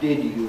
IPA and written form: ˋdɪd ju (did you)